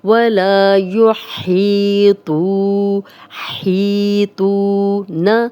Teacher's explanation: تو موٹا حرف ہے اور واو مدہ بھی ہے، جزم والی واو، پیچھے تو پہ پیش، دو حرکات لمبا کریں گے